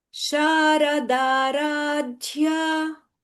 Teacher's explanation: it is Sharadaradhya. The dhya is Mahaprana.